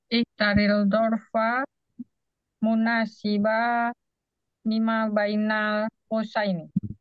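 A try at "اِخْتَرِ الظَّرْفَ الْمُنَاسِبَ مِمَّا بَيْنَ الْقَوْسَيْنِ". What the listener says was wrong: Iya, oke bagus.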